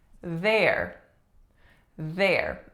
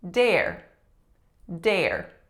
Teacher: again voiced th and to substitute it with a d would produce the word dare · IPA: /ð/